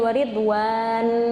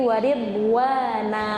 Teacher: Jadi bukan waridwan, tapi waridwana. Jadi panjang dua harokat.